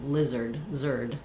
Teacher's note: We have first syllable stress. The li is going to be long. And then because the second syllable is the unstressed syllable, it doesn't have an R for the letters AR.